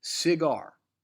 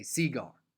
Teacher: the emphasis is on gar